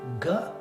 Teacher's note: the first soft consonant that we make in the back of our throat